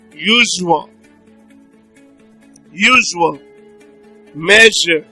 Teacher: Okay, then we have sh, sh. Now, this one is a voiced palatoalveolar fricative consonant sound